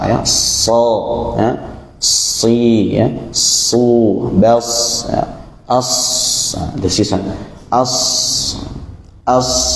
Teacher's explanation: berbeda ya Sebagian ulama itu membedakan desisan kepada tiga huruf ini huruf Shad misalkan katanya desisanya itu Mirip suara angsa